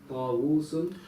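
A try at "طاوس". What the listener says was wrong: Okay, on top of the wow, it's really a Hamza. Ta'uz. Yeah, the first wow is Hamza. Ta'uz. So it's Hamza there, yeah? And on the second wow, there's a sukoon. Ta'uzun.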